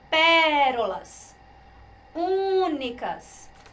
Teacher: porque a sílaba tônica das duas, é a antepenúltima